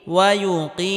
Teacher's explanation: জেরের বাম পাশে জজমালা ইয়া মাদের হরফ একালি পরিমাণ লম্বা করে টানতে হবে।